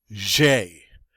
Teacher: in french we say jay that zh there is the zh sound like the s in measure or pleasure